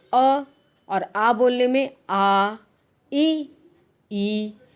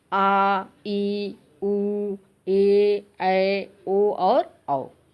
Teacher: इनके उच्चारण में ह्रस्व स्वरों से दुगना समय लगता है और ये 7 हैं। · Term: दीर्घ स्वर